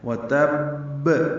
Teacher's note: وتب من با مشدد ہے، اس پہ قلقلہ ہوگا لیکن رک کر قلقلہ ہوگا کیونکہ با پر تشدید آئی ہے، تھوڑا سا دبا کر۔ اب یہ با 2 مرتبہ ادا ہوگا، تشدید والا حرف ہمیشہ 2 مرتبہ ادا ہوتا ہے۔